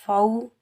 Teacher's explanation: فما، واو ساکن سے پہلے فا کے اوپر زبر ہے، واو لین ہے، اس کو ہم نرمی اور جلدی سے ادا کریں گے اور بغیر کھینچے پڑھیں گے